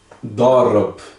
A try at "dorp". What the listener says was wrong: É um P. Dorp. Dorp.